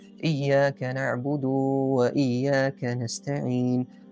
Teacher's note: کچھ لوگ پڑھ لیتے ہیں ایاک نعبد و ایاک نستعین، تو دال کو مد دے دیتے ہیں جیسے کہ اس کے بعد واو ہے